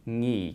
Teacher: It starts with a voiced velar nasal, which is where your tongue goes up here to your velum and makes an ng sound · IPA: ŋi˧ˀ˥